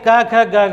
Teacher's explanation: जैसे हम बोलेंगे क ख ग घ वाले, ये कहाँ से बोले जाते हैं, तो आप लोग लिखेंगे भैया ये बोले जाते हैं हमारे कंठ से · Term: कंठी व्यंजन